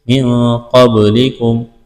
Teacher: من قبلکم نون ساکن کے بعد قاف ہے، یہاں پر اخفا کریں گے، آواز ناک میں چھپائیں گے، قاف کو موٹا کرنا ہے، با ساکن ہے، با پر قلقلہ کریں گے۔